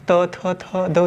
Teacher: तो ये त थ द ध ये दंती हो जाते हैं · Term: दंत व्यंजन